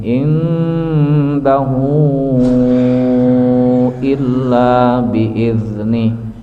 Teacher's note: Kemudian sebelumnya indahu ikhfanya ikhfa aqrab. Jadi tidak terlalu didengungkan. Jadi nun masuk ke hidung.